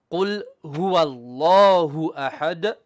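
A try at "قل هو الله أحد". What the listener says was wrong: The first ha is bottom third ha, not ha, middle throat. Qul hu ha, bottom third ha. Qul huwa Allahu ahad.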